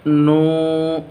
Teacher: اس کو کھینچیں گے کیونکہ واو پر جزم ہے اور یہ مدہ ہے، اور اس سے پہلے حرف مدہ ہے اور اس سے پہلے پیش بھی ہے۔ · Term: حرف مدہ واو